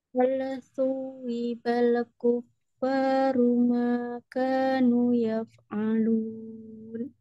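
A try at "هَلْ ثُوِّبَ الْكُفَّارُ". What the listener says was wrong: Perhatikan hati-hati di lamnya, jangan menggumpal, jadi hal tidak hal tapi hal suwibal kufaru makanu yaf'alun.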